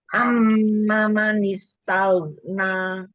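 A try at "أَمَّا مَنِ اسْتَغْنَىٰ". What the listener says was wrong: Hanya 2 harokat. Amma.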